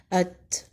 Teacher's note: زبان کی نوک اوپر کے 2 دانتوں کی جڑ سے لگائیں۔ تا حروف ہمس میں سے بھی ہے، یعنی مخرج پہ جانے کے بعد ہوا جاری رہتی ہے